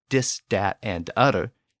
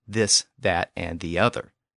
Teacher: some dialects spoken around New Orleans, it's common to say dis, dat, and utter instead of this, that, and the other